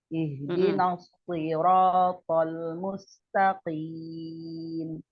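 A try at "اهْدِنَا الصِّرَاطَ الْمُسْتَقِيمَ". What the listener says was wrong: Shot yang tasdid, di situ kan shotnya tasdid ya. Durasi shot sama sofirnya kurang kuat. Coba kuatnya lagi.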